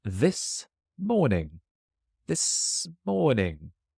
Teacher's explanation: The S jumps and joins morning. Smorning. This morning.